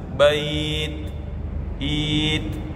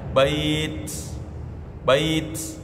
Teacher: karena dia sukun atau berhenti, maka bunyi hams atau desis dari huruf ta itu lebih jelas